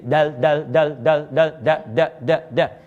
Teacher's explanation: Makanya ringan, udara keluar. Tapi kalau dal itu disebut harful infijar. Harful infijar itu mesti diledakkan.